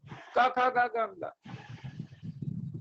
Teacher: अर्थात अकुह विसर्जनीय नाम कंठ, अक्कु मने कवर्ग, क ख ग घ ङ और विसर्ग, ये सभी क्या है, कंठ से उच्चरित होते हैं